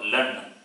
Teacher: La with the Chandra Bindu. Nasalized La.